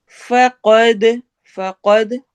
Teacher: قاف کو ہم نے موٹا کر کے پڑھنا ہے ، دال پہ ہم نے قلقلہ کرنا ہے، ہدیہ الى صراط · فقد فقد قاف کو ہم نے موٹا کر کے پڑھنا ہے، دال پہ ہم نے قلقلہ کرنا ہے